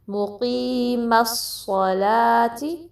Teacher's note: صاد heavy ہے لیکن لام ہیوی لیٹر نہیں ہے، تو لام کے لیے زبان کو فلیٹ رکھنا ہے، اس میں صلا، لا نہیں پڑھنا بلکہ لا، ٹھیک ہے۔